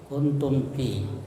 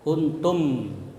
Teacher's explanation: cara membacanya mim disuarakan dengan terang, ya, mim, ya, jelas di bibir dan mulut tertutup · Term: izhar syafawi